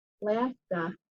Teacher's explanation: Alaska, that has two schwas, one in the front and one in the back.